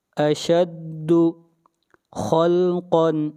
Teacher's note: خا اور قاف یہ دونوں حروف مستعلیہ میں سے ہیں، دونوں کو موٹا پڑھا جائے گا